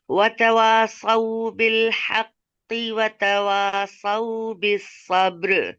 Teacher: वतवासौ में वाव के ऊपर हरकत है, और वाव को राउंड करके हम बगैर खींचे पढ़ेंगे। तवासौ, तवासौ में ता मुतहर्रिक है, इसे बगैर खींचे पढ़ेंगे।